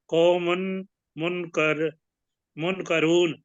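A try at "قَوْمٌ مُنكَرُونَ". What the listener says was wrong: कौमुम मुनकरून, ये उसको साथ मिला के पढ़े ना, कौमुम मुनकरून।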